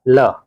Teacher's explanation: प्रयत्न के आधार पर ल जो है पार्श्विक ध्वनि है